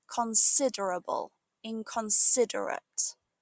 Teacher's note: In both words, the stress falls on the same sound, sid.